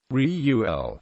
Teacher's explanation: with the first syllable strong accented is nearer to the true pronunciation